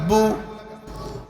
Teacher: দুই ঠোঁটগুলো করিয়া বু। পেশ অবস্থায় দুই ঠোঁট গোলাকার বু